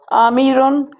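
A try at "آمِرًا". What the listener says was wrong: ٹھیک ہے، آپ نے پڑھا صحیح تھا،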